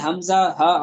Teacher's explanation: اقصائے حلق، حلق کا وہ حصہ ہے جو آخری حصہ جو سینے کی طرف ہے، اس سے حمزہ ہا ادا ہوتے ہیں